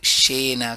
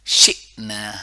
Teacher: جب بھی حمزہ روکتا ہے تو اس میں جھٹکا آتا ہے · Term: حمزہ ساکنہ